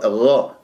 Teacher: والخاء مخرجهما من أدنى الحلق، لكن الخاء يجري فيها الصوت والنفس، والغين يجري فيها الصوت ولا يجري فيها النفس، إن أجريت النفس فيها شوي أشممتها خاء